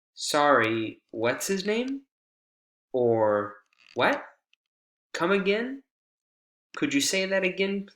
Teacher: we have Rising intonation with those wh questions whenever we're trying to ask for clarification or have something repeated